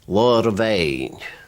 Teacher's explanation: The B becomes a V sound and is written BH.